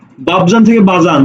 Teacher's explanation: শব্দের মাঝখানে প ছিল এই পটা এখানে এসে হারিয়ে গেছে